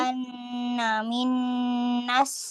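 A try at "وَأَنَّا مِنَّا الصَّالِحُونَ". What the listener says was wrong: So, bukan sa. So.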